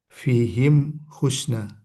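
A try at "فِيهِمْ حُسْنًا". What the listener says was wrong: Husnan ya, karena ada alifnya.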